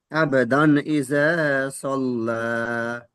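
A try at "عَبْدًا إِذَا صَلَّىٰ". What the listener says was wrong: এখানে আবাদান বলছেন তো, আব বা কলকলা হবে, হরফে কলকলা। জি, বা হরফে কলকলা 5টি অক্ষরের মধ্যে। এই 5টি অক্ষরের উপরে জজম বা সুকুন হলে এটি কলকলা করে আগের অক্ষরের সাথে মিলিয়ে পড়তে হয়।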